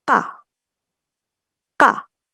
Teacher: pita suaranya lebih tegang sama bunyinya lebih pendek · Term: tense konsonan